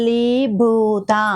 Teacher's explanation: లి కి దీర్ఘం ఇవ్వాలి అలాగే భూ దగ్గర కూడా దీర్ఘం ఇవ్వాలి అంటే భూ అనేది మహాప్రాణ అక్షరం కాబట్టి పొట్టలోంచి గాలి తీస్తూ గట్టిగా భూ